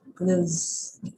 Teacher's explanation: Jadi pada kata pakaian walaupun ada TH-nya itu dia tidak dibaca sebagai TH, dia dibaca sebagai huruf kayak huruf Z gitu, clothes. Jadi karena sebenarnya Cloth itu artinya kain, sedangkan clothes itu pakaian.